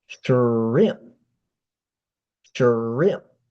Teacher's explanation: the P, you can just close your lips and stop the word